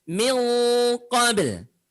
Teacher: Min qabl. Min, tahan dulu karena dia ikhfa ya, ada unsur gunahnya